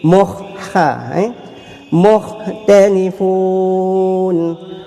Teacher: Mukh hamas, ada bunyi angin.